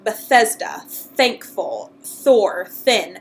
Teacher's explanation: You press your teeth against that ridge again, and instead of making a sound from your throat with your vocal cords, you instead release a little aspiration of air, and that aspiration of air presses the tongue down and pushes the tongue and the teeth apart. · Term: Thorn